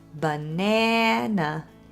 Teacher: The stressed syllable is in the middle, and the other two As are this little /uh/, schwa.